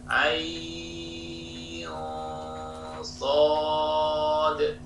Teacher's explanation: Ikhfa'nya di sini ain, mungkin kedengaran tebalnya dengung saya ya, ain sod, ikhfa'nya menjadi tebal atau tafkhim